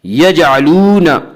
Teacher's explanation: یجعلون واو مدہ وہ واو جو ساکن ہو اس سے پہلے پیش ہو اور واو مدہ کو ایک الف کی مقدار کھینچ کر پڑھتے ہیں